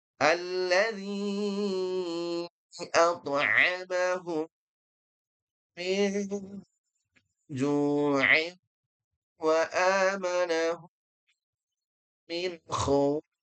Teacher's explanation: Hum mendengung, mim mati ketemu mim, mendengung ya.